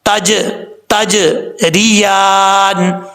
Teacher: یہاں جیم ساکن ہے تو یہاں پہ قلقلہ ہوگا · را کے نیچے زیر ہے، یہاں پر را بریک پڑھا جائے گا. اور یا کے اوپر کھڑا زبر ہے، ایک الف کی مقدار لمبا کیا جائے گا.